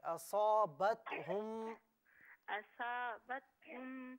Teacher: स्वाद को पुर पढ़े